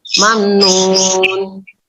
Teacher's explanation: Mamnun dibaca izhar syafawi. Izhar syafawi yaitu dibaca jelas karena ada huruf mim sukun bertemu dengan huruf nun.